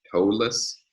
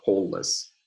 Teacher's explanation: toe-less with diphthong O, but pole-less with monophthong O